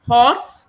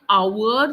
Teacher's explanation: Horse, the H is hissed out, so we say horse. But in our, the H is silent.